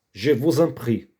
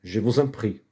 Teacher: Liaison significa ligação. Quando a letra S tem encontro com uma vogal, se torna Z.